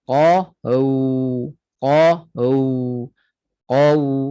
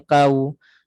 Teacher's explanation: Waw muncung betul-betul qau sampai kita rasa suara itu di antara dua bibir masuk, keluar di situ qau. Ruang di antara dua bibir sempit pada waw lin berbanding waw mat.